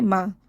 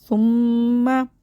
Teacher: میم مشدد کو غنّے کے ساتھ پڑھیں گے